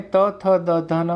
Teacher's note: જ્યારે તમે ત, થ, દ, ધ, ન બોલો છો ત્યારે વિદ્યાર્થીઓ તમારી જીભ દાંત સાથે અડે છે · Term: દંત્ય